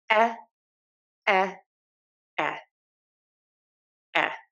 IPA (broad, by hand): ɛ